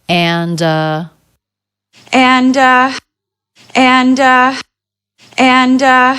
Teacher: the d links right into the next sound which is the uh as in butter sound